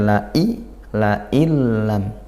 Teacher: nun sukun bertemu lam maka idgham bila ghunah karena idgham masuk kita seolah tidak mendengar bunyi Nun nya la Ilam kalau kita dengar saja gak ada bunyi in gak